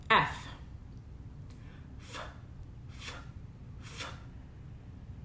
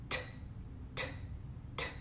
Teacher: these are unvoiced consonants air is simply moving through open resting vocal folds